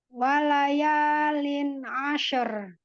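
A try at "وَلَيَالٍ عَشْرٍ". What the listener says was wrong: Wala. La. Tidak wala. Tidak ke atas suara huruf lam. Lam istifal, Bun. Jadi wala. Wala yalin ashar.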